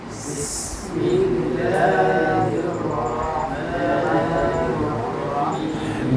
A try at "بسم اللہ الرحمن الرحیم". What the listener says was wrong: بسم اللہ مجھے دیکھیں، بسم اللہ یہ ہونٹ جو گول ہو رہے ہیں نا، موٹے حروف میں ہونٹ گول نہیں ہونے چاہیے، گول یہ غلط ہے۔ بسم اللہ میرے ہونٹ گول ہو رہے ہیں؟